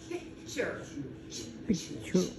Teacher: So it's not picture, it doesn't say T, it says ch, picture